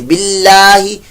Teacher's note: اللہ کا نام باریک رکھیے